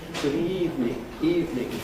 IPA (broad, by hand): ˈgʊd ˋiːvnɪŋ